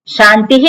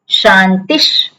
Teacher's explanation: વિસર્ગ જે છે એ અડધો શકાર થઈ જાય આખો શને શક શકાર થઈ જાય શકાર એટલે ત્યાં શાંતિશ શાંતિહી